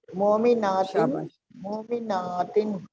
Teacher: ماتن تھوڑا سا الف لمبا کریں گے